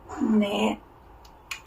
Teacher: It's ended with the front nasal sound na Na na is a front nasal sound na one one one one Na is a front nasal.